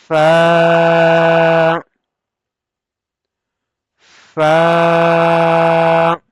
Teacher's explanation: We can say fa when we will touch the upfront teeth edge with the down lip wet part, the inner side of the down lip, originate by the edge of the upper front teeth, touches the inner side of the lower lip